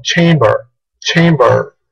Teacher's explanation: los americanos sí pronuncian la R final. Así que ellos pronunciarían esta palabra como chamber. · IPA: /'tʃeɪmbə(r)/